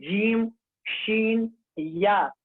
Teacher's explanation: جیم شین اور یا متحرک و یا لین کا مخرج زبان کا بیچ اور اس کے مقابل اوپر کا تالو